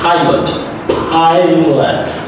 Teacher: Pilot is also very positive. You push a lot of air outside, and P is unvoiced consonant sound.